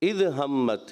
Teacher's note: दूसरी आयत में इद हमत यानी ज़ाल में कलकला महसूस हुआ